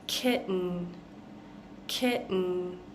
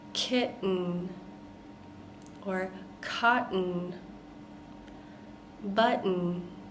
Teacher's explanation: when we're saying kitten, kitten, we're almost swallowing this T sound